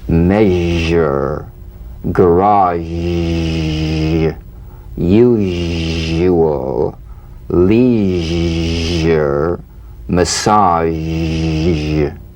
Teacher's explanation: The voiced tongue blade S sound consonant. Make the whispering SH and add vocal resonance. All suggestion of the SH must vanish. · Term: ZH